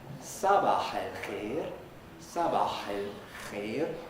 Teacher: This is a uvular fricative, the thing that listeners tend to get mixed up with the pharyngeal fricative